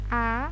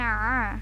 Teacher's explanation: Yang huruf hamzah ini letaknya di pangkal tenggorokan, kalau yang ain ini letaknya di tengah tenggorokan. Jadi dia sama dengan huruf h kecil.